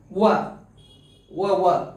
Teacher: ದಂತ ಮತ್ತು ತುಟಿಯ ಸಹಾಯದಿಂದ ಉಚ್ಚರಿಸಲ್ಪಡುವ ಅಕ್ಷರಗಳು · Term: ದಂತೌಷ್ಟ್ಯ